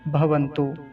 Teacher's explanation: छोटे ऊ की मात्रा है, ह्रस्व उकार, भवन्तु। अब खींच कर नहीं बोलेंगे लंबा, क्योंकि बड़े ऊ की मात्रा होती तो लंबा खींच कर बोलते, भवन्तु ऐसा।